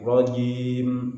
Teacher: Ra tasdidnya diucapkan dengan getaran yang halus. Rajim, namun jangan sampai polos sehingga tidak ada getaran sama sekali.